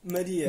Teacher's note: português europeu dizemos Maria exatamente Maria não é Maria Pois é com a fechado já que não está na sílaba tônica